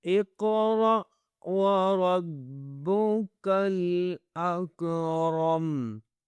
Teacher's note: را کو موٹا کرنا ہے، با کے ساتھ ملانا ہے